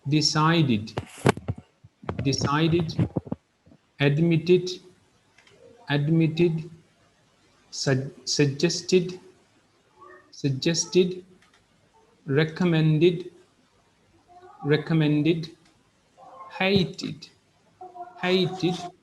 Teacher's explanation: you need to pronounce e d as id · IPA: /ɪd/